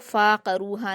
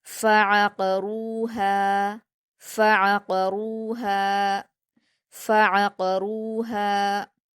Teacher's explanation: आपको फ़ा और आइन दोनों के मखरज को अलग अलग करके अदा करना है